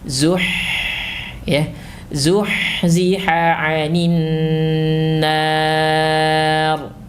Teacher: Ingat, ha dalam keadaan sukun memiliki sifat rokhawah, alirkan.